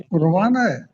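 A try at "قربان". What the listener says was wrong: हाँ जी,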